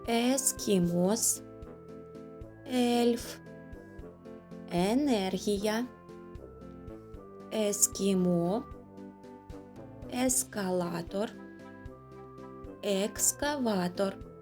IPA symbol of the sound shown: е